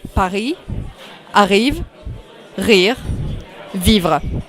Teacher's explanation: The sound re is at the back of the throat